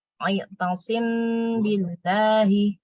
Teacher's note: Bacanya dengung ya setelah mim langsung ke bi.